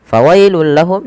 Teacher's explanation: suara tanwin yang langsung dimasukkan ke huruf lam karena ia idgham bila gunnah